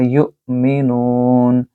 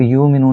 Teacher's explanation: یو کو جھٹکے سے پڑھیں گے. جب بھی حمزہ کے اوپر یا الف کے اوپر جزم کی علامت ہو تو وہاں جھٹکے سے آواز نکالی جاتی ہے، تو اس کو آپ یو مینون نہیں پڑھ سکتے.